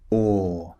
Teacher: Remember the shape of the mouth, the lips are very, very rounded. Or, and it's a long sound.